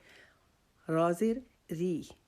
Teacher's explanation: را، را کو ادا کرنے کے لیے ہم نے ہماری جو سامنے والے 4 دانت ہیں ان کے ساتھ ہم اپنی زبان کی نوک کو لگائیں گے اور را کو ادا کریں گے. را زیر ری، چونکہ را کے نیچے زیر آ گیا ہے تو اب اس را کو ہم باریک پڑھیں گے. را زیر ری، اس کو را زیر رے نہیں پڑھیں گے، غلط ہے.